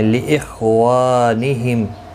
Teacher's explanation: خا مستعلیہ ہے، پر پڑھا جائے گا، اس کو ہلانا نہیں. وا الف مدہ ہے، 1 الف کی مقدار کے برابر کھینچ کر پڑھیں گے.